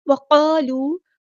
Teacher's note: وقالوا لن تمسنا النار، وقالوا، قاف ہمارا ہیبریٹر ہے، پورا ادا کریں گے، الف مد آ گیا تو مد اصلی کریں گے، یہ جو قاف کے ساتھ الف آیا ہے تو اس کو ہم پورا ادا کریں گے، یہاں پر واؤ مد آ گیا تو مد اصلی کریں گے، ایک الف کے برابر لمبا کریں گے